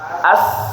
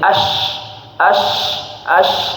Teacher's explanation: Ya, jangan terlalu rapat lidah dengan langit-langit mulutnya. kalau lidah kita merapat dengan langit-langit mulut, maka dia berubah jadi shin biasanya.